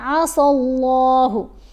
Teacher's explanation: لفظ اللہ کے لام کو موٹا پڑا کیونکہ سین کے اوپر زبر آ گئی